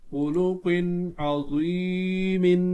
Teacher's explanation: تنوین میں یہاں اظہار ہوگا کیونکہ اس کے بعد تنوین کے بعد عین ہے، حرف حلقیہ میں سے